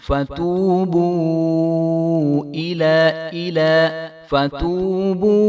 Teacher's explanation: انفسکم باتخاذکم غال کو بھی ہم لمبا نہیں ہونے دیں گے، باتخاذکم العجل تو آپ کو پتا ہے کہ جیم جو ہے حروف قلقلہ میں سے ہے، تو یہاں پہ جو ہے جیم ساکن ہے تو اس کو ہم ہلا کر پڑھیں گے، باتخاذکم العجل فتوبو دونوں واؤ جو ہیں یہ واؤ مدہ ہیں، تو ان کو ہم ایک الف برابر لمبا کریں گے۔ فا کو ہم نے نہیں کھینچنا.